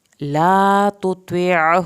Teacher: یہاں پر تا اور طا کی آواز علیحدہ علیحدہ نکالنی ہے. تطیعہ عین کو حلق سے پڑھیں گے.